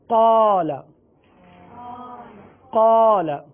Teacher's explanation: الف سے پہلے قاف، حرف پر ہے، لہذا الف کو بھی پر پڑھیں گے۔ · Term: الف کو پر